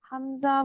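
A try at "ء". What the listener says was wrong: مخرج سے حمزہ نہیں آ رہا آپ کا. مخرج سے ادائیگی نہیں آ رہی. مجھے ایسا لگ رہا ہے جیسے مخرج سے ادائیگی نہیں ہے.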